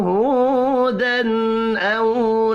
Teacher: تنوین کے بعد حروف حلقی ہے, اظہار حلقی ہوگا, غنہ نہیں ہوگا